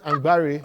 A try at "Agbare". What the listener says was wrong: You're not pronouncing the M. Agbare.